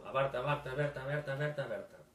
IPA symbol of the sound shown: ɛ